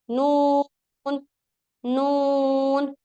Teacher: जुबान का बारीक किनारा ऊपर वाले दांतों के मसूड़ों से ही लगेगा लेकिन दांतों की पोजीशन चेंज है आप ये देख सकते हैं